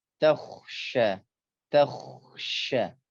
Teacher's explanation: Di dalam kata ini terdapat huruf kha yang menghadapi huruf shin. Nah, maka sempurnakan tebal huruf kha, jangan terpengaruh oleh tipisnya shin.